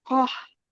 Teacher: Setelah panjang 6 harokat baru ditekan. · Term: tasydidnya